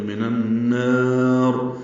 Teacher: منن یہ بھی غن ہے، نون کو نون سے ملائیں گے، ادغام شمسی ہوگا.